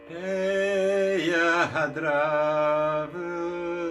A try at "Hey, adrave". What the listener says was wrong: And there's no h on the adara. That would imply a G grace note. Hey, adara. So it's really smooth. Hey, adrave. And then when you go up, you can put in a little v there. Hey, adrave. Again, that means no grace note.